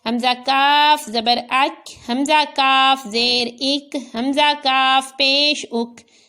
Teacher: اب یہ کاف ہے تو اس کو باریک بھی پڑھا اور نرمی سے بھی پڑھا،